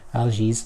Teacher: I would probably end it with an Algiz just to get that Z sound, that hard vibrating S.